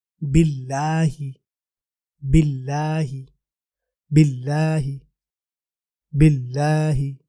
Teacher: اب اگلے لفظ پہ جاتے ہیں جو کہ ہے باللہ۔ یہاں پہ آپ نے لام کو موٹا نہیں پڑھنا، باللہ ہی نہیں بولنا، باریک رکھنا ہے۔